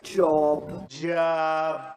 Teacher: americans use a different vowel sound and their lips will be more open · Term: lot vowel